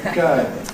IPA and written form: ˈgəɪŋ (going)